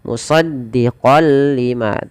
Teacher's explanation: kita masukkan kepada huruf lam musaddiqol lima awalnya dibaca musaddiqon lima karena bertemu lam masuk tanwinnya kepada lam nunnya hilang